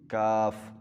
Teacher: कौफ नुक्तों वाला मुंह गोल करके मोटी बात में कौफ, और जो दूसरा किताब वाला काफ है इसको बारीक यानी कि मुंह चौड़ा कर लें, गोल ना होने दें और नरमी के साथ आराम के साथ इसकी आवाज़ निकालेंगे